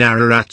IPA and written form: ˈærəræt (Mount Ararat)